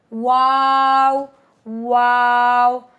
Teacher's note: दोनों हंठ गोल करके वाओ अदा होता है। और यह यानी हंठ इस पे आपके गोल होंगे। · واو دونوں ہونٹ گول کر کے واو ادا ہوتا ہے